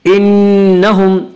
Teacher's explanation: نون مشدد غنہ ہوگا، ایک الف کی مقدار غنہ کریں گے